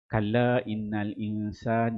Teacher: Kalla ni mat munfasil. Kat sini kita baca dengan tarik Syatibi 4 harakat.